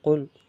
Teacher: কফ উচ্চারণ হয় জিহ্বার গোড়া তালুর নরম অংশ থেকে